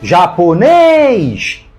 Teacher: ela é oxítona terminada em e e por isso acentuada japonês tem três sílabas e a mais forte é a última